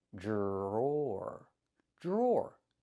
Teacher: The dr makes a j sound like a juice and jump.